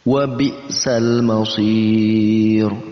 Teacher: Di situ ada mad arid lisukun, dibaca 2 sampai 6 harakat. Mad arid lisukun adanya mad tabi'i yang jatuh setelahnya ada huruf yang diwaqafkan karena di akhir ayat.